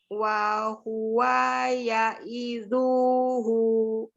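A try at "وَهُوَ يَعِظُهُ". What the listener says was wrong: Lihat lagi, uanya pendek, jadi langsung disambung. Wa huwa ya'izuhu. Ini yang panjang cuma hu, maka ini pendek semua, tidak boleh terpisah. Langsung disambung hu. Sampai hu.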